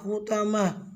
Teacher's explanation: तो को पुर यानी मोटा अदा करना है और गोल ता पे वक्फ होगा तो हा साउंड पे होगा